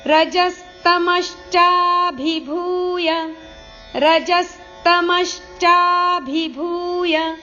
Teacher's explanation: रजस् स अर्ध तमश् श अर्ಧ ರಜಸ್ತಮಶ್ಚಾಭಿಭೂಯ ಇಲ್ಲಿ ಭ ಮಹಾಪ್ರಾಣ ಭೂ ದೀರ್ಘ ಇದೆ.